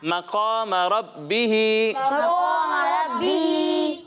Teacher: را کو بھی موٹا پڑھنا ہے اور قاف کو بھی موٹا پڑھنا ہے